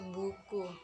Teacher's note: Bunyi yang keenam yaitu u. Tinggi, belakang, bulat.